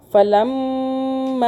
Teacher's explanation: میم کے اوپر تشدید ہے، اس لیے ہم نے میم پہ تھوڑا سا ہولڈ کیا۔ آگے الف کے اوپر مدہ آ رہی ہے، چھوٹی مدہ، اس کو ہم نے تین الف کے برابر کھینچا۔